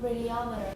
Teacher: But make it a schwa at the end. The second to last syllable should have a schwa.